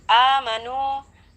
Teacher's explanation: A berharokat fathah berdiri di sana hukumnya mad badal ya, dibaca dengan kadar panjang 2 harkat atau 2 ketukan juga.